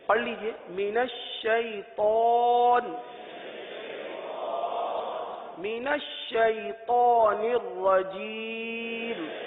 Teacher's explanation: اس میں طا آ رہا ہے، طا کو پر پڑھیں گے، طا حروف مستعلیہ میں سے، من الشیطان نہیں، من الشیطان پڑھ لیجئے، من الشیطان، من الشیطان الرجیم۔